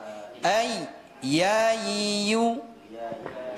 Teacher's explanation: Tengah lidah dia menyentuh langit-langit yang ada di atasnya. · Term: huruf ya